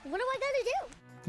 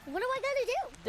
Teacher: the D in the auxiliary verb do is pronounced with a flap sound